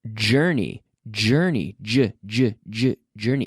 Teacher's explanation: it's like a CH and then I activate my vocal cords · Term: J sound